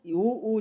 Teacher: उ ऊ जब उच्चारण कर रहे हो तब जो है गोलाकार हो रहे हैं ओष्ठ